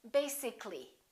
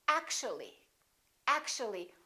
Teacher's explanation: this a disappears so the a is not pronounced